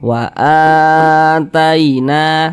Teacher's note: Mad badal, panjangnya 2 harokat. 2 harokat itu kira-kira sepanjang 2 ketukan, 1, 2. Wa ataina.